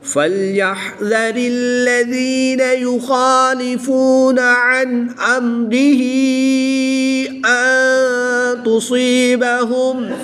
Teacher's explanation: نون ساکن کے بعد تا حروف اخفا میں سے ہے تو یہاں پر اخفا ہوگا یعنی غنہ زمانی کر کے پڑھیں گے۔ صاد حروف مستعلیہ میں سے ہے تو اس کو پر یعنی موٹا پڑھیں گے۔